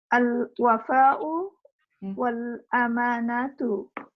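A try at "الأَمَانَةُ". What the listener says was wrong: अमानतु नहीं कहिएगा, अमानतु मत कहिए, अमानतु, अलिफ नहीं है ना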